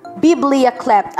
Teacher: Ang stress po ay nasa first syllable.